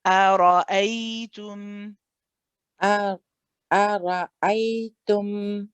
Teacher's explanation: So after you say the heaviness of the ra, shift back to a light a.